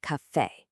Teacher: The word café actually drops its stress right on that second syllable, making it café.